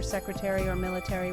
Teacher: In British English, the stress is usually on the first syllable